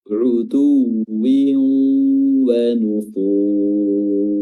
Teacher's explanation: Dan fur di sini mad arid lisukun 4 harokat, dan yang terakhir adalah ra dibaca tebal karena dia sukun dan sebelumnya ada dhammah · Bibir ditarik, pertama dia dhammah memang, bibir monyong, utuwi, lalu bibir ditarik ketika kasrah, dan kembali lagi bibir monyong karena huruf waw setelahnya.